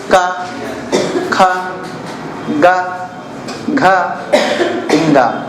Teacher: जैसे आप बोलो ना, इसमें जीभ हरकत करेगी, ना तुम्हारा तालु हरकत करेगा, ना तुम्हारा ओंठ हरकत करेगा, केवल कंठ से आवाज आएगी। देखो का, ख, ग, घ, इंगा। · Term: कंठ वर्ग